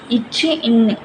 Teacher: இச்சு இன் இது வந்து நாவின் இடைப்பகுதி நடு அண்ணத்தை பொருந்துறதுனால இருக்கிறது